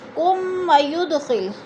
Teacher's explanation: میم ساکن کے بعد واو آ گیا ہے تو ادھر اظہار ہو رہا ہے